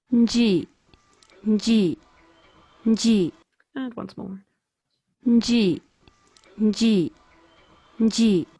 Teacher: we see this nasal and then the frication and then the vowel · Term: prenasal element